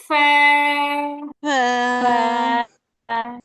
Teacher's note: উপরের দুই দাঁত নিচের ঠোঁটের পেটের সাথে লাগবে।